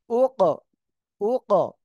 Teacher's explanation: ফালা উক, হামজা কফ পেশ উক। এখানে কফ সাকিন রয়েছে, আমরা কি করব? ধাক্কা দিয়ে পড়বো।